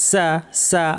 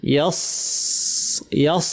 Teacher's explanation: সা পাতলা, সদ ভারী, একই জায়গা থেকে 2টা উচ্চারণ হয়। জিহ্বার শীর্ষটা নিচে পাটের দাঁতের গোড়ায় লাগিয়ে উচ্চারিত হয়, সিন এবং সদ 2টাই, কিন্তু সিনটা পাতলা।